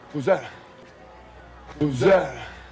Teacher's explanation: Also notice that drops the TH in that.